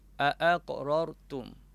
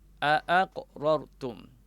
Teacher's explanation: kita kena jelas betul-betul kedua-dua hamzah tersebut daripada makhrajnya pangkal halqum dipanggil bacaan secara tahqiq